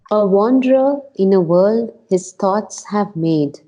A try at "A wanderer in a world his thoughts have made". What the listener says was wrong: No, dropped it again. Made. Made. A wanderer in a world his thoughts have made. You see, I say made. I don't say made. Made.